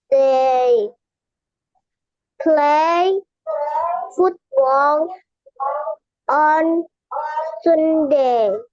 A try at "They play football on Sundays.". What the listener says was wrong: Kan tadi eh Sundays bacanya Sundays ada S-nya ya.